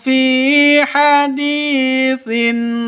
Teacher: Fi haditin fi panjang dua ketukan. Karena ada ya mati diawali dengan kasrah. Mad asli atau mad thobi'i.